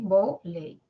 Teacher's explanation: En la primera sílaba, vo, la O. Y en la segunda se pronuncian 2 vocales, la E y la I, ley. No es que solo se pronuncie la E. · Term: grupo vocálico